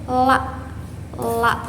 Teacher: huruf la ini keluar dari tepi lidah yang di depan menempel pada gusi atas. Nah, dia ini bersifat majhur.